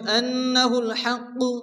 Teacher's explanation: আলিফ টেনে পড়তে হবে فيعلمون أنه الحق নুনের উপর তাসদীদ নুন গুণ ওয়াজিব